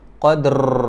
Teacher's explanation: cara bunyikan huruf ra ni adalah kita masukkan sedikit bunyi takrir ataupun getaran.